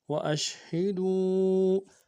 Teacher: واو مدہ کے اوپر مدہ عارض ہے، کم سے کم دو الف انداز میں کھینچیں گے